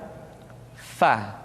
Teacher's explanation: Diucapkan dengan menyentuhkan ujung dua gigi seri kita bagian atas dengan bibir bawah bagian dalam. Fa. Seperti kita mengucapkan huruf F di dalam huruf Latin. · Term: huruf Fa